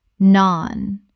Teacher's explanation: Rhymes with barn. The vowel is long, like the A in father.